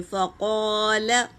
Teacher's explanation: قوف پر ہے نا، تو اس کو پر پڑھیں گے